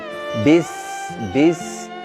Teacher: makhrajnya itu ujung lidah berada di antara sela-sela gigi atas dan bawah. Bis tidak nempel ke atas, tidak nempel ke bawah. Kemudian di antara sifatnya adalah bis, kita bisa merasakan ada aliran nafas, kemudian suara juga tidak tertahan, artinya dia lepas, kemudian ada suara mendesisnya. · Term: sin